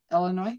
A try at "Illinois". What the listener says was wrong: Illinois. You don't pronounce the S at the end.